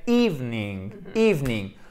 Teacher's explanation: Parce que si vous le faites bien ici, votre accent tonique, il est là. Si vous faites le i long, comme il se doit, ça fait evening, evening. Du coup, vous ne pouvez pas prononcer le E intercalaire ici, qui est comme un E intercalaire, parce que sinon, vous ne pourriez pas avoir l'accentuation sur le premier E.